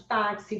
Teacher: que o X tem som de KS, é uma letra mais dois fonemas. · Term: dífono